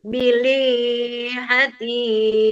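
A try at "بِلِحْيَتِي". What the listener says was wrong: Itu ada ha sebelum ya. Bilih yati.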